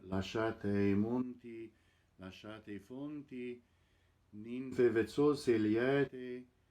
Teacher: Notice the closed O's in monti, fonti, vezzose, and the open E in liete.